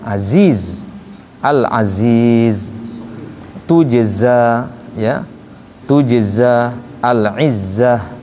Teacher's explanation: Jadi zainya itu harus ada desisnya.